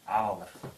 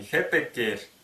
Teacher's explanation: буква П между двумя гласными переходит в букву В